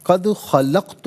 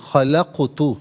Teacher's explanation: قاف ساکن ہے لیکن حرف قلقلہ ہے تو قلقلہ کیا جائے گا